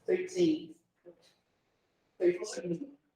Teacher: A sílaba forte é a última.